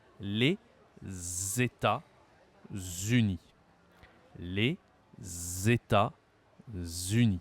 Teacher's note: tu as une liaison entre le premier mot et le deuxème · Il faut bien que tu fasses un Z